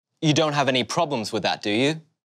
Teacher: we use a rising intonation at the end of the question tag because they are always yes no questions